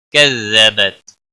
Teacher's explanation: کسی بھی حرکت والے حرف کو کھینچنا نہیں، تا باریک تا ہے، اس کو ہلانا نہیں۔